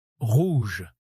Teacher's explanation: Parce que le R français, c'est un son unique. Il est guttural, il vient du fond de la gorge. C'est un peu comme si vous faisiez un petit raclement de gorge léger, mais sans aller trop loin.